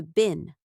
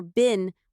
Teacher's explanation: In American English, you will often hear something close to been. In British English, you may also hear been with a longer vowel.